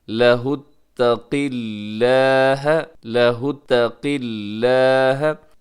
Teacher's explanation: قاف اگرچہ موٹا ہے، زیر بھی ہے، لیکن آگے لفظ اللہ جو ہے وہ باریک پڑھا جائے گا، قاف کو موٹا رکھنا ہے۔